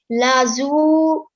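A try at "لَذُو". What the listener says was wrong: But remember, the sound of a dhal cannot be a za sound. They're 2 different letters, okay? So, ladhu. Okay, dhal, not a dal sound.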